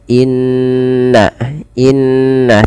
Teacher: bacaan ketika kita memasukkan bunyi suara kepada rongga hidung kita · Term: gunah